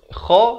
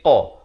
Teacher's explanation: kalau nak tahu kha ni makhrajnya di hujung kerongkong. Qa pula makhrajnya di pangkal lidah. Dia dekat-dekat tetapi berbeza, tempat keluar yang berbeza.